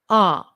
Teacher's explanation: is a long shape look at my mouth ah the jaw has to be dropped